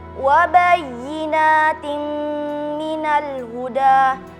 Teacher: idgham bi gunnah dalam kata wa bayyinatin minal huda, karena ada kasrotain bertemu dengan huruf mim dibaca dengung.